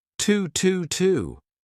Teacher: instead of saying to, you can say T, a very unstressed T, but connect it to your next sound.